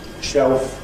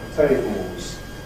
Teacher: This is the tendency to make / l / like a kind of vowel, instead of Dark L [ ɫ ], to pronounce [ o ], which is a close-mid back rounded vowel. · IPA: [ ʃeof ]